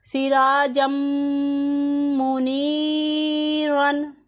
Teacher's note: आपने गौर किया कि तनवीन से ज़्यादा मीम की आवाज़ पे ज़ोर दिया गया है क्योंकि वो मुशद्दद है। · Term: इदगाम